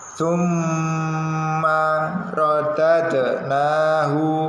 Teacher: Nah ini ada tasdid di huruf mim. Kalau ada tanda tasdid di huruf mim dan nun itu termasuk bacaan gunnah, jadi ditahan terlebih dahulu, jangan langsung dilepaskan.